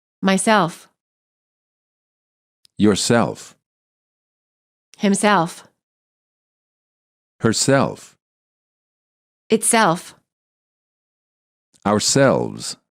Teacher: reflexive pronouns stress the last syllable